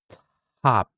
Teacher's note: we have the h sound after the t sound next together together so now exhale to give that h sound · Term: allophones of voiceless stops